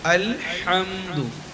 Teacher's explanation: হায় হুত্তি গলা চিবিয়ে কণ্ঠনালীর মাঝখান থেকে উচ্চারণ করতে হবে